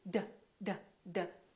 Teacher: This is a stop because we cannot prolong it. We cannot say d, d, d.